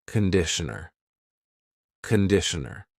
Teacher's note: It's not conditioner, it's conditioner. The first vowel is a schwa.